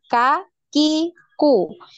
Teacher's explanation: K ya, sama seperti ketika kita mengucapkan huruf K di Indonesia, yaitu sama persis K, K, Ki, Ku. Nah, kemudian untuk huruf kaf ini ada aliran nafas.